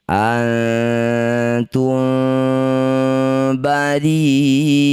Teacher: Ri wajib dipanjangkan 6 harokat. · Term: mad wajib muttasil